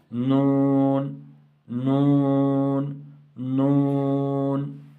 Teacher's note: تو انیاب سے لے کر ثنایا تک جب دانتوں کی جڑ यहाँ मसोड़ नहीं, मसोड़ों से, वहाँ पर मसोड़ों से लगता है, यहाँ दांतों की जड़, यानी जहाँ से दांत उगते हैं, जहाँ से दांत उगे हुए हैं, यानी मसोड़ों के बाद नून का मखरज है। तो तरफ लिसान जब अनियाब से लेकर सनाया के दांतों की जड़ों से लगे तो नून अदा होता है।